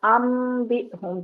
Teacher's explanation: با اگر آ جاتا ہے نون ساکن یا تنوین کے بعد تو پھر اس کی آواز میم میں بدل جاتی ہے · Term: اقلاب